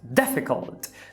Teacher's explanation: Veja que a primeira é a tônica.